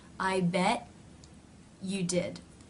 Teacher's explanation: rather than releasing air through the teeth, the mouth simply moves in to the next sound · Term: No release